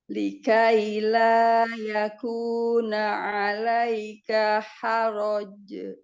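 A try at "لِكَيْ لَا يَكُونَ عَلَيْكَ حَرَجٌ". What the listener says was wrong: Jangan ditasdid. Haroje gitu aja. Kalau ditasdid haroje. Nah, itu tasdid. Haroje.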